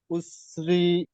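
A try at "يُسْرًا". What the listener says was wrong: মাশাআল্লাহ, ইউসরা। হ্যাঁ, বিষয়টা বুঝতে পেরেছেন তো, একটা যাবার উচ্চারণ হবে, একালিপ টান হবে।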